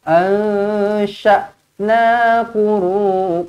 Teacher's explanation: Ansha' ikhfa hakiki, dengungkan 2 harakat.